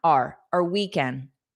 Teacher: Native speakers almost always pronounce our as R, a very unstressed R. So it will be the same as you are, R.